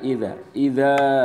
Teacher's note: panjang 2 harokat, ketukan 2 ketukan. Yakni mad asli.